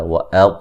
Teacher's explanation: طا کو موٹا ادا کریں گے، ہو یہ را جو ہے وقفاً وصلاً موٹی پڑی جائے گی.